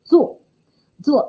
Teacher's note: When it is pronounced as 做, 第四声, the falling tone, it carries the meaning of work.